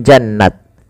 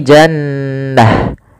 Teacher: Kaidah tak marbutoh itu adalah diganti dengan ha ketika dia di akhir bacaan.